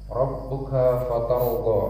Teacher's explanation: Rabbuka ba-nya juga ada tasydid, itu harus tahan. Fatarda. Bo agak mulutnya agak maju sedikit.